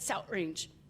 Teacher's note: instead of that soft TH, some people will say that glottal stop